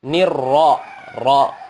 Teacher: Di mana makhrajnya ra, dia berada di ujung lidah, menyentuh langit-langit atas, bagian depan sedikit dari huruf nun